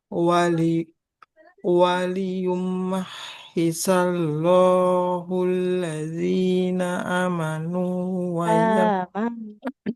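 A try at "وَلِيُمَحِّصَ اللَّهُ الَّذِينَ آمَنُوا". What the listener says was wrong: Huruf sadanya berubah jadi sin.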